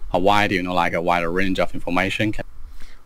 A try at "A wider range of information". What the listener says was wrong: Because to me, this sounds like wide a range. But he's actually saying wider range.